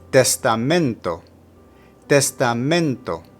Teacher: For testamento, put the emphasis of pronunciation on the penultimate or second to last syllable